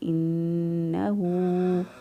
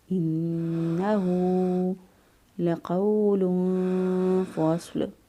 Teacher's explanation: انہو، ہاں پیش بہو، یہاں الٹا پیش ہو، 1 الف کے برابر لمبا کریں گے۔